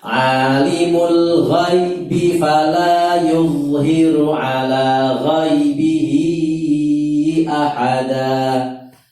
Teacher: B-nya pendek, begitu pendek B langsung masuk ke fa